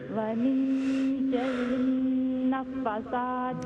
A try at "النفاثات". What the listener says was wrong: نہیں، نفاثات، فا اور سا کے اوپر لانگ فتحہ ہے.